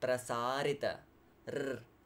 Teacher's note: The tongue stays in front and it kind of vibrates r, against your alveola with the flow of the air. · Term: Scottish r